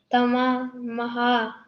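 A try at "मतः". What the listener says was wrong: Mataha. Mataha. T is there, na? T was there. Mataha.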